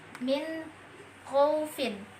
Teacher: nun mati bertemu dengan kho maka dibaca jelas tanpa didengungkan